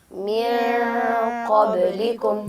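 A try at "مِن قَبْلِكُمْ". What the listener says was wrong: जी, यहाँ पे नून को ज़ाहिर करके नहीं पढ़ सकते। मिन क़ब्लिकुम ये गलत और रॉन्ग तरीका है अदायगी का, जबकि आप इख्फ़ा करके पढ़ेंगे।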